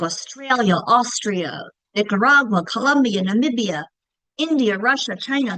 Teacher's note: they all end with that a making that schwa sound